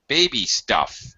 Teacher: I say stuff with a higher pitch.